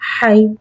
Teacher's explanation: یا ساکن ہے، یا ساکن سے پہلے زبر آ رہا ہے، یا لین ہو رہا ہے، حرف لین کو بغیر کھینچے بغیر جھٹکا دیے نرمی سے معروف پڑھیں گے اور زبر کو منہ کھول کے ادا کریں گے